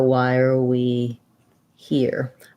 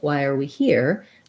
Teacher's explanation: between we and here um but the the pattern is that why are we is fast so why are we that links a little bit as well and then here is where we have our length that's the stress in that phrase